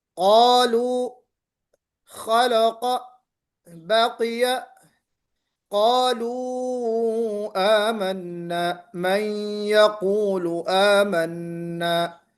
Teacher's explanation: جہاں پہ قاف نکلا وہاں آپ نے محسوس کیا آواز میں موٹا پن آیا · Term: تفخیم